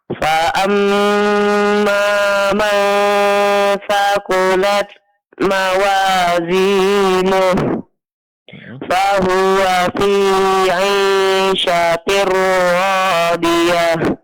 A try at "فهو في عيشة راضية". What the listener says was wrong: Ra-nya lebih tebalkan sedikit lagi. Fahuwa fi 'ishatir radiyah.